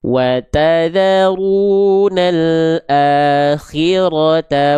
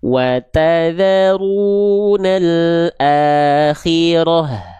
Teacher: kalau kita berhenti berarti dia dibaca menjadi H besar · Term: H besar sukun